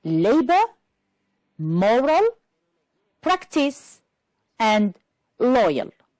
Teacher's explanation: Which words are stressed on the first syllable? Yes, labor, moral, practice, and loyal.